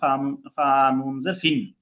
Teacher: তানবিন আর নুন সাকিনের উচ্চারণটা একই হচ্ছে তাহলে, বাংলায় দন্ত ন।